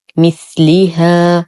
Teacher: نصبر على الثاء فهو حرف لثوي ساكن، نتم كسرة اللام.